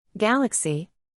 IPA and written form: ˈɡæl.ək.si (Galaxy)